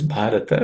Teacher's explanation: The next word is bharata. Bha is also an aspirated consonant, so it has to be aspirated.